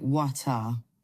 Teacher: In British English, the T is usually more crisp.